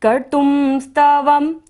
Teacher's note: तो बिंदी का उच्चारण यहाँ पर हम म करेंगे